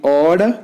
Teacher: This is a long vowel comparatively O, but the length is reduced before voiceless consonants. O is a back between half open and half closed, rounded vowel.